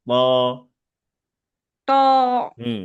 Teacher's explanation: ত বলার সময় যেন দুই ঠোঁট গোল না হয়ে যায়, তুয়া না হয়ে যায়